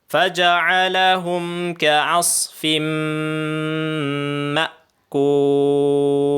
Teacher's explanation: in hamzah rin doon patampalon mo ma tinya humundong in napas humundong in tingog